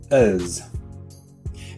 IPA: əz